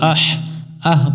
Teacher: মিলবে হা এর সাথে আহ আহ এখানে আহ পড়া যাবে না এটা হচ্ছে লম্বা হা আমরা এখানে হলকের মধ্য থেকে একটু বাতাস বের করে উচ্চারণ করব